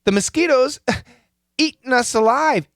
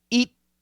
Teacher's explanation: This is a stop T right to the end, like mountain, hitting, eating. So we come here to the T, eat, and this position is the same position as the N.